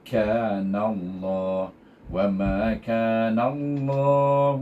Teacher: Selepas kita idgham syamsi kan dia dibaca dengan tebal.